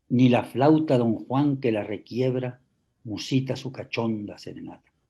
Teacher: un verso endecasílabo con acento en la sílaba sexta en la o ese acento prosódico musicalmente se tiene que acentuar